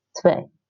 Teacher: The W is more like a V. Twee. So you say twee.